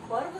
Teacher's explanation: जब हम पर्व साथ में बोलते हैं तो इस र का उच्चारण बहुत जल्दी किया जाता है